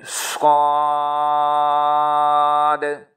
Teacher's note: सीटी की आवाज हो गई लेकिन मोटी हो गई · शीन, ज़ुबान की नोक और सनाया सुफला का किनारा, नीचे वाले दांत और ज़ुबान की नोक, मोटा करके इसको पढ़ेंगे। स्वाद, सीटी की आवाज़ होगी लेकिन मोटी होगी।